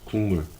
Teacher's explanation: 뒤에 있는 미음, 니은이 앞에 있는 이 파열음들을요, 파열음이죠. 파열음을요, 비음으로 끌어당기는 거예요. 그쵸? 이게 비음화입니다.